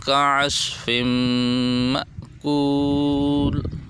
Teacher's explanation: فا کو میم سے ملائیں گے، ناک میں آواز کو لے کے جائیں گے، غنہ کریں گے